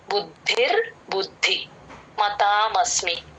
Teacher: బుద్ధికి మహాప్రాణం ఉంది ద కింద ద వత్తు కూడా ఉంది